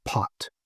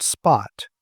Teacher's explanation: But when you put an S in front of that to get the word spot, that puff of air all but disappears. And so we have a P that's accompanied by a little puff of air and we have a P that isn't. And so those are alophones of P.